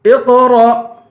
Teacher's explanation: قاف کو پر پڑھیں گے، را کو حمزے سے ملا کر حمزے پہ جھٹکا دیں گے